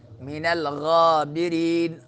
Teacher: غا کڑی زبر لمبا کریں گے اور را باریک پڑھیں گے